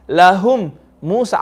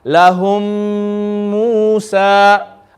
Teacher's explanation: Because of this rule known as idgham, assimilating, merging, combining the two memes together in sound. We're not going to read it lahum Musa.